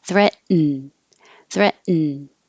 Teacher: this is a syllabic in meaning the in becomes its own syllable so when your tongue goes up for the T threat you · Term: syllabic N